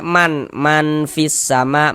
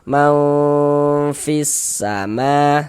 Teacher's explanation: A cara membaca ikhfa hakiki dibaca samar. Jadi bunyi nun sukun atau bunyi tanwinnya itu dibaca samar dengan bersiap-siap masuk ke dalam huruf ikhfanya. disamarkan kemudian juga didengungkan. · Tapi kita baca mau kemudian didengungkan sehingganya di bagian maunya itu suaranya itu kita tahan, kita panjangkan sejenak, kita gunahkan, kita dengungkan kira-kira sepanjang dua harakat.